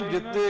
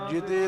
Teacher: ਹਾਂ ਕਈ ਨਾ ਜਿੱਤੇ ਕਹਿ ਜਾਂਦੇ ਐ, ਪਰ ਜਿੱਤੇ ਦਾ ਅਰਥ ਹੁੰਦਾ ਜਿਤਨਾ ਤੇ ਜਿਤੇ ਦਾ ਅਰਥ ਹੁੰਦਾ ਏ ਜਿੰਨੇ ਵੀ। ਇੱਥੇ ਪੋਲਾ ਬੋਲਿਆ ਜਾਏਗਾ, ਆਦਿਕ ਨਹੀਂ ਲਾਉਣੀ